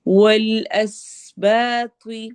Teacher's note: اس سین میں سٹی والی آواز ہوگی، با الف مدہ.